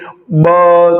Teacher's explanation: ब बोलते ही आपके जहां पर गले में वाइब्रेशन होता है। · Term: सघोष